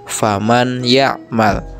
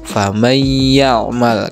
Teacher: Idgham bi gunah adalah ketika ada nun sukun atau tanwin bertemu dengan salah satu huruf idgham bi gunah, yakni ya, nun, mim, wawu. Maka suara nun sukunnya dileburkan ke huruf idgham bi gunah